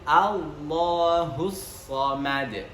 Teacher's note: ma itu harus masuk ke rongga hidung dan diakhiri dengan dal yang bersifat qalqalah juga ketika sukun